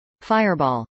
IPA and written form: fˈaɪɚbˌɔːl (fireball)